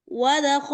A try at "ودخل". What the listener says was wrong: ওয়া, ওয়া পড়ার সময় ঠোঁট আরো গোল করে শুরু করবেন, ওয়া, ودخل، ওয়া, ودخل